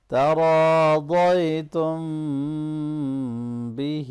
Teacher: ضاد کو بھی موٹا کرنا ہے، آگے یا لین ہے اس کو نرمی سے ملائیں گے · یا بھی ہم ملاتے ہوئے نیزل ساؤنڈ کریں گے۔ تراضیتم بہ، ہا کو اچھی طرح سے ادا کرنا ہے اور کھڑی زیر کو تھوڑا سا لمبا کریں گے